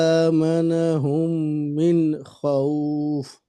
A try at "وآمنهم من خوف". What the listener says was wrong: এখানে ও হবে না, ওয়া।